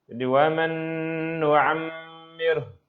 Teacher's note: Tapi nun yang pertama tak bunyi. Nun yang pertama huruf yang pertama itu tidak bunyi sebab langsung masuk ke yang kedua. Itu dipanggil idgham kamil bil gunnah, yaitu idgham sempurna dengan gunnah.